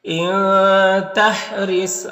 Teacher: صاد کو پر پڑھیں گے، حروف مستعلیہ میں سے